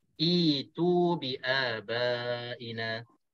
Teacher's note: Di sini hamzah bertemu dengan hamzah, maka cukup syaratnya hamzah yang keduanya baris mati, ditukarkan hamzah baris mati ini kepada huruf mad yang sesuai. Jadi hamzah wasal di sini dibacakan dengan baris bawah, maka huruf hamzah baris mati ini ditukarkan dengan huruf ya